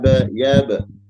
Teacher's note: Huruf ba sukun itu harus qalqalah mantul.